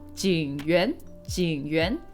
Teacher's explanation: I kind of just go low high. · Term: third tone